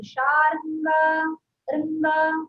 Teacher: రంగా అనే రా మీద అచ్చు వినిపించకూడదు